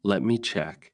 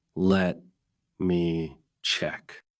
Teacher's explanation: But if you slow down and say it naturally, let me check. With a small pause and a rising tone, it sounds calm, helpful, and polite.